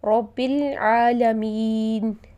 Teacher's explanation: یعنی یہاں دیکھیے میں نے پڑھا رب العالمین، جبکہ یہاں پر ورڈ ہے العالمین، تو نون کے اوپر زبر تھی، لیکن میں نے اس کو جو ساکن کیا ہے اسے ہم سکون عارضی بولتے ہیں، یعنی میں نے اس کو ساکن خود سے کیا ہے، یہ پرماننٹ یہاں پر سکون کی علامت موجود نہیں ہے۔